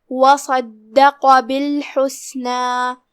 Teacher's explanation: हा की अदायगी हलक के दरमियान वाले हिस्से से है, आखिरी में मद है तो उसका ध्यान रहे।